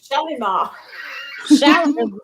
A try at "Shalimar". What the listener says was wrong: The Y is silent. The Y is silent, so it's Shalma.